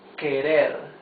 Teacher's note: the r is the soft sound of the r because it's not at the beginning of the word and because it is not doubled it is not Double R